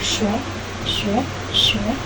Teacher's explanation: Diucapkan dengan posisi ujung menekan gusi bawah, bagian depan daun lidah mendekati bagian depan langit-langit keras. Ketika melepaskan hambatan, aliran udara mendesak keluar melalui celah sempit, bergeseran menghasilkan bunyi geseran sh, sh, sh.